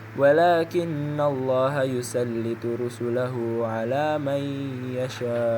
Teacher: Idgham bighunah artinya hukum bacaan yang dibaca mendengung. Idgham bighunah dibaca dengan dengung selama dua harakat atau satu alif.